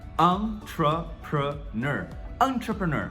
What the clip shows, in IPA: ˌɑn·trə·prəˈnɜr